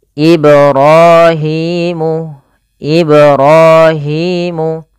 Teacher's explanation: panjang ro dan Hi harus sama kedua-duanya · Kemudian Ibrahimul qawaidah, pada lafal ibra pantulkan huruf ba pada lafal kata Ibrahim, karena pada lafal ba tersebut ada bacaan qalqalah, yaitu memantul.